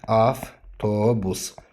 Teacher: Yəni v-nın F kimi tələffüzü. Yəni demək istədiyim odur ki, F V kimi də deyilir, V F kimi də deyilir.